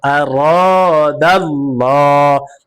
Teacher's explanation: আল্লাহ শব্দের লামকে পুর করে পড়েছি, অর্থাৎ মোটা করে পড়েছি